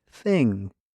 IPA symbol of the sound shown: θ